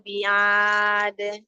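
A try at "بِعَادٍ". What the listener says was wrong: Sempurnakan huruf ain. Tidak bi'ad, huruf tenggorokan tengah.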